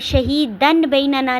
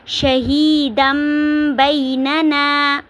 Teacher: آگے شہیدم بیننا، اب شہیدن بیننا نہیں پڑھیں گے، تنوین کی آواز کو میم میں بدل دیں گے، شہیدم بیننا۔